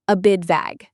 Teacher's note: The T at the end of bit often disappears or becomes a very soft D sound when we speak fast.